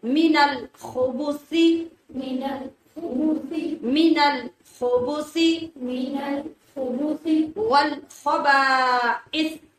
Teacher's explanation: خا کو موٹا اور رگڑ کی آواز کے ساتھ اور سا کو بغیر سیٹی کی آواز کے نرمی سے، جیسا